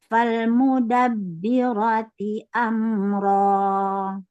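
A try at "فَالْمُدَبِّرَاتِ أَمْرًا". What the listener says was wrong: Oh, kurang konsisten. Falmudabbirati amra. Sama panjang.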